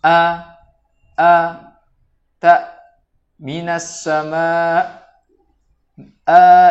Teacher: Yang pertama adalah huruf hamzah. Huruf hamzah ini secara makhraj atau secara tempat keluar huruf ini berasal dari bagian tenggorokan yang paling jauh, atau kita katakan aqsal halqi.